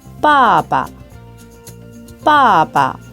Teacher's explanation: 발음하지 않고 반 정도만 발음한 다음에 그 뒤에 경성을 발음해 줍니다 앞에 사성이 올 때는 사성을 발음하고 조금 더 낮은 단계에서 경성을 발음해 줍니다